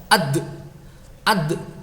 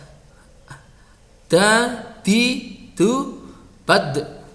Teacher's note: Ketika mengucapkan ad, nah nafasnya tidak muncul. Ad, bunyinya tidak ada, tapi dia punya qalqalah ya.